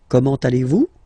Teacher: it's a question, so raise a little bit your voice at the end, like comment allez-vous?